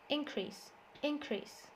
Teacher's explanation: So the verb, the stress is on the second syllable, increases, increases. The noun, the stress is on the first syllable